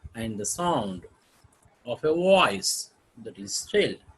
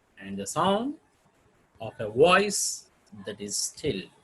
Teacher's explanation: two unaccented syllables followed by the one accented syllable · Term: anapest